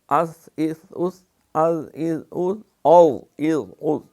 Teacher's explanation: صفیریہ اس لیے کہ ان میں سیٹی کی آواز جو ہے وہ پیدا ہوتی ہے